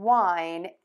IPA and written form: waɪn (WHINE)